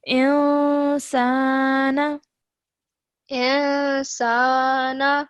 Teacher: we have to produce a partial nasal sound for 2 seconds because the next letter is seen